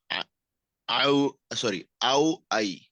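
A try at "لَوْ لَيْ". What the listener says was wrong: না, এটা হলো লাম। আমরা আগেই বলেছি, আলিফের পরে এখানে আলিফের সাথে কোনো শব্দ যুক্ত হয় না। হ্যাঁ, এটা হলো লাউ লাই।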